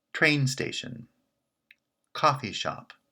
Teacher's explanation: strong word followed by a weak word train station coffee shop the pitch is on the first word in each of those compounds · Shop is not branching, so it's the weak member. So we have two compounds made up of a strong word followed by a weak word. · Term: compound stress